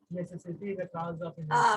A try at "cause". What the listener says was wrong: काउज नहीं, कॉज. ठीक है ना? अब कॉज बोलना.